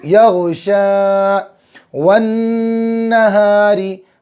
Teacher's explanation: नून पर तशदीद है, नून में हमेशा गुन्ना होगा